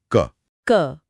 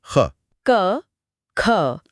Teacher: ख बोलने पर हाथ पर जोर से हवा का झोंका लगता है। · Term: महाप्राण